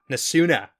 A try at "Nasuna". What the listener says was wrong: You gotta pronounce that last vowel.